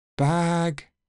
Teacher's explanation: ah likes to become a long vowel sound before voiced consonants